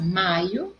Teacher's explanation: em maio a sílaba forte é mai em maiô no o acento circunflexo oxítona terminada em pó e